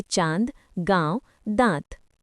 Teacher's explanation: अनुनासिक ऐसे स्वरों का उच्चारण नाक तथा मुंह दोनों से होता है और उच्चारण में लघुता रहती है, जैसे चांद, गांव, दांत।